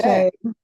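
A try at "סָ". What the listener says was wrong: say, a little longer.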